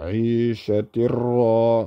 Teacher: Then we have Aishatirra, which we talked about, the Tanween, followed by Ra. It's going to be Idgham, Idgham without Ghunna.